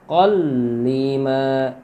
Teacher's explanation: Jadi fatatannya diidghamkan ke huruf lam tanpa guna. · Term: idgham bila gunnah